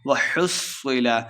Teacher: صاد مشدد ہے، ہا کو صاد کے ساتھ ملا کے پڑھنا ہے، صاد موٹا پڑھا جا رہے گا۔